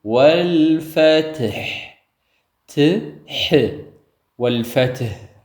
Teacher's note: ላም ስኩን እናልፋለን ወል እንዳትነጥርብን ጥንቃቄ ያስፈልጋል ወልፈትህ ትህ ወልፈትህ አይደለ መጨረሻው ሐ ነው በደንብ ጉሮሮአችን ላይ ፈግፈገን ልናወጣው ይገባል